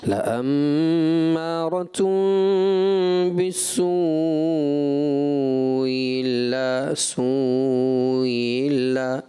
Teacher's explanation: بس میں ایک چیز ایڈ کرنا چاہوں گا, وہ یہ کہ لأمارۃ بالسوء الا, یہ 2 حمزہ یہاں پر جمع ہوئے ہیں, ان کو تحقیق سے پڑھنا چاہیے تھا. محسوس ایسا ہوا کہ آپ نے پہلے حمزہ کو نرمی سے پڑھ دیا, ایسے مجھے لگا جیسے آپ نے یوں پڑھا لأمارۃ بالسوء الا سوء الا, ایسے نہیں, ایسے پڑھیں گے لأمارۃ بالسوء الا, دونوں حمزہ تحقیق صاف ستھرے انداز میں پڑھنا تھا.